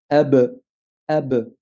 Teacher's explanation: la définition du point d'articulation, c'est en collant les lèvres l'une contre l'autre. Bah pour la qalqala, il suffira tout simplement de décoller les lèvres. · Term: la lettre B, lettre ba